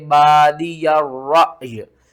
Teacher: हमज़ा को झटके के साथ पढ़ना है और साथ में या को भी पढ़ना है, रा हमज़ा या ज़बर रअय।